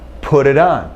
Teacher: you get this D sound if the t is between uh two vowel sounds